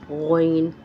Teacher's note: गौइन ये दरमियानी हलक से अदा होता है, जहाँ से खौ अदा होता है वहीं से गौइन अदा होता है।